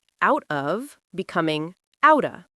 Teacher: Well, out ends with a t sound, and of starts with a vowel sound. When you say them together quickly, that t sound basically merges with the o sound, and it becomes this glided outta sound.